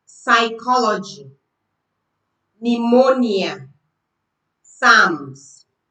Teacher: these words begin with P, but the P sound is not heard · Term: silent P